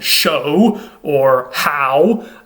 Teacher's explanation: there isn't necessarily a consonant W there. It's more of a diphthong, a vowel with two parts to it, and that W sound is actually more of an sound, so it actually represents more of a U sound than a W sound.